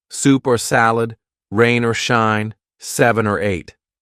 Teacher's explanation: this or would be connected to the word before and it will sound like er so the or now sounds like or ER lunch or dinner